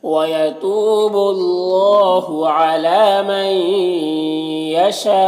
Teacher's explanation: نون ساکن کے بعد یا ہے، حروف یومن میں سے، تو یہاں پر ادغام ناقص ہوگا، غنہ کے ساتھ میں پڑھیں گے